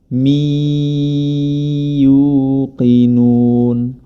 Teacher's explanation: huruf mim berharokat kasrotani bertemu dengan huruf ya, maka hukum bacaannya adalah idgham bi gunnah